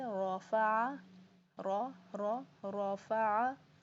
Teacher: बताएं मुझे, जब रा के पीछे पेश ज़बर, पेश दो ज़बर दो पेश हों या रा साकिन हो तब भी रा पुर होगी, मोटी पड़ी जाएगी